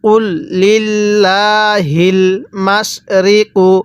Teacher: এখানে আল্লাহ শব্দের লামটাকে আমরা চিকন করে পড়বো